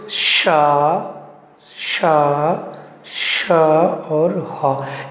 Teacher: इनको बोलते वक्त थोड़ा सा रगड़ से हवा बाहर निकलती है जिससे थोड़ी वो गर्म हो जाती है, इसलिए उनको ऊष्म व्यंजन कहते हैं।